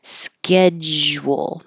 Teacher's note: you stop the airflow with a J. Your tongue completely blocks the airflow, but then as you pull your tongue down and air starts going over it, it will sound like a zh. So if you hear that transition from a j to a zh, that's good.